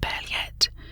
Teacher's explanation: is pronounced Paillette with stress on the second syllable